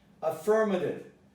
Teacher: I think you remember that the T becomes the D. Why? Because it is between two vowels. They're voiced.